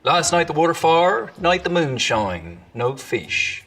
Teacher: another distinctive thing about the old Ocracoke accent is it's also got a real sort of bounce to it, which is something that both those southwestern and those East Anglian accents also have in common.